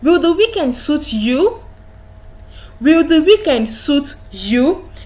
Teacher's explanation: when you get to you your voice rises in that case we say that question is in the rising tone